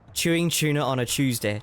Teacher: We said Tuesday and tuna with like a ch sound.